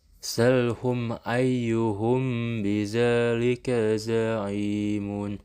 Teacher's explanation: Cara membacanya harus disuarakan samar-samar di bibir dan didengungkan. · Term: ikhfa syafawi